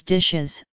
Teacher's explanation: in plurals such as dishes a vowel is added before the S